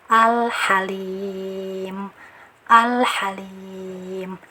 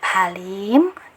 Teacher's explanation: Nah kita lihat cirinya alamnya sukun atau tidak Nah di sini lamnya sukun jadi dibaca izhar atau jelas